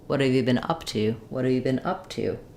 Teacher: I might have a little rise in pitch and also a lot of more length on my up